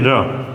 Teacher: र में कंपन भी हो रहा है और लुढ़कते हुए निकल रहा है जैसे लगता है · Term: प्रकंपित